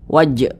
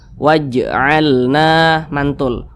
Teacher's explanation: Maka huruf jim ini bacanya itu dipantulkan, dan dia termasuk kepada qalqalah sugro karena di tengah kalimat. Jadi pantulannya itu kecil saja.